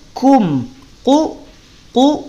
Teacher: qof tidak punya sifat hams makanya tidak ada percikan nafas